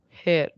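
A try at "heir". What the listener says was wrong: air. No, the H is silent. Air. Air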